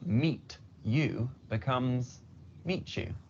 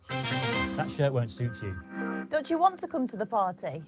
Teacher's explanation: the two sounds come together and change to ch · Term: assimilation